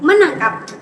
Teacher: Bunyi T berubah menjadi N karena keduanya berada pada daerah artikulasi yang sama yaitu alveolar. Artinya ujung lidah menyentuh bagian atas gusi. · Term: peluluhan bunyi